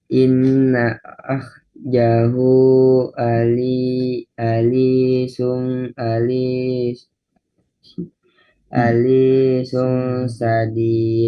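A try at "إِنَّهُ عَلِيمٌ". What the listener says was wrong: Alimun. Kenapa tadi ada khoknya bacanya? Akhadahu kenapa? Kan nggak ada harokat fathah di atas khok kan? Ya itu karena itu nonnya ditasdid mesti digunah, ditahan.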